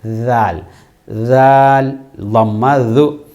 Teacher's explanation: தால் சொல்லும்போது எங்களுடைய நாக்குடைய நுனி மேல் பல்லுடைய கூறில் பட வேண்டும்